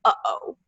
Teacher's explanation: the glottal stop which is kind of hard to produce but it's it's the sound in uh oh